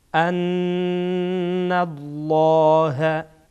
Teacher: نون در اینجا غنه میشه لام هم در اینجا پر میشه